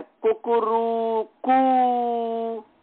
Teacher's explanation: ये ह्रस्व दीर्घ प्लुत तीनों का उच्चारण करता है, एक मात्रिक दो मात्रिक तीनों का, त्रिमात्रिक सबका उच्चारण करता है।